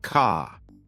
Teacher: British accent tends to soften the R, so car sounds more like ka.